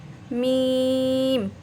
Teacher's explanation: ये देखें, ये और ये वाला हिस्सा नहीं मिलाना आपने, जहाँ से हमारे होंठ शुरू हो रहे हैं ना, इन दोनों को आपस में मिलाएंगे